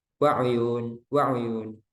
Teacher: mengurangi kadar satu harokatnya itu dikurangi, artinya ada kecepatan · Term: ikhtilas